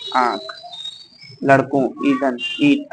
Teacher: दीर्घ के बाद आने वाले अनुस्वार का उच्चारण अनुनासिक की तरह होता है, जैसे आंख, लड़कों, ईंधन, ईट आदि।